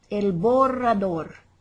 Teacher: here's where we can just use those rolling r's all we want